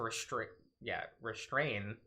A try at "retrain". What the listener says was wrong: It was retrain. There was no S. Retrain. You said restrain.